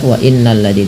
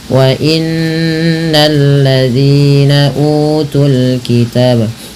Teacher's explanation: bukan hanya sekedar tasydidnya saja, tapi ditahan dengan gunnah · cara membacanya menahan bunyi suara n-nya atau bunyi suara nun-nya sepanjang 2 harokat